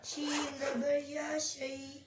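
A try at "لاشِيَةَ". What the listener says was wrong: شے لمبا نہیں کرنا.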